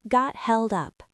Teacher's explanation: the T at the end of got connects directly to the H at the beginning of held. In fluent fast speech, native speakers often drop that H sound entirely.